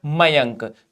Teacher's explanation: अनुस्वार केवल नाक से बोला जाता है